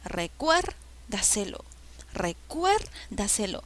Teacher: La sílaba que lleva la mayor fuerza de voz es cuer. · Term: sobresdrújula